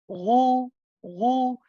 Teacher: the back of the tongue is raised, okay, and pushed back.